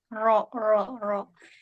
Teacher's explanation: Jadi apa yang lebih dari sekali getarannya? Jadi ro itu dia bergetar lebih dari sekali, tapi getarannya adalah getaran yang lembut ya. Getaran yang tersembunyi.